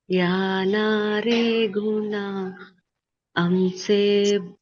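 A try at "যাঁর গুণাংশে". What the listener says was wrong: యారా గుణాంశే బ్రహ్మ శివాది ఈశ్వర, యారా గుణే నారాయణ షష్ఠి గుణేశ్వర. యారా ఎన్ వచ్చినప్పుడు అది సైలెంట్ అన్నమాట, అర్థమైందా? యారా బెంగాలీలో ఆ ఎన్ అలా రాసినప్పుడు సైలెంట్ గా ఉంటుంది. యారా గుణ అంశే బ్రహ్మ శివాదీశ్వర, యారా గుణే నారాయణ షష్ఠి గుణేశ్వర.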